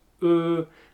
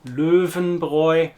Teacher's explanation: say a German E sound, E, and then try and round your lips to form an O sound, so it's a mixture between O and E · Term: The Ö sound